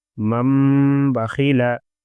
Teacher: تنوین یا نون ساکن کے بعد با آئے تو نون کو میم سے بدل کر غنہ اور اخفا کے ساتھ پڑھیں گے۔ اس کو انقلاب کہتے ہیں۔